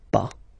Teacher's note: as usual, final S is not pronounced, so it's pas.